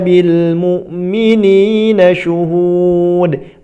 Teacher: Syuhud juga panjang, sama seperti ayat-ayat yang di atas, dan diakhiri dengan qalqalah.